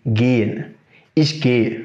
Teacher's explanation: Mais lorsque le H se trouve au milieu d'un mot, on ne le prononce pas.